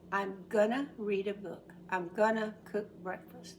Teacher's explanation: about pronunciation when speaking this does not apply to writing but when speaking going to is pronounced gonna most of the time